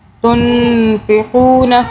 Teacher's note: نون پہ اخفا کیا، یعنی کہ غنہ کیا 2 سیکنڈ کا